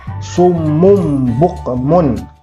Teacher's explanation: Nah, misalkan di sini ya, nun mati kan ini, kemudian di depannya huruf ba, maka nunnya itu berubah menjadi mim, bukan nun lagi. Jadi kita bacanya mim ba'di. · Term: iqlab